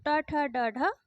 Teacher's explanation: ट ठ ड ढ यह सारे मुर्धन्य के अंतर्गत आएंगे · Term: मुर्धन्य ध्वनियां, मूर्धन्य ध्वनियाँ